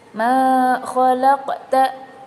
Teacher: Ma khalaqta itu hukumnya adalah qalqalah sugro atau kecil, karena huruf qalqalah yaitu qaf mati di tengah kalimat